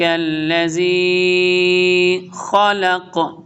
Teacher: یہ زی الذی کو ہم لمبا کر رہے ہیں بیکاز یا ساکن اس سے پہلے زیر ہے تو یا مد ہے